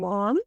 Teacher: in place of articulation, this sound is bilabial, and this means that we are going to use both lips to produce it. And we have that in manner of production, it is nasal, and this means that the air is going to flow out of our nose instead of our mouth.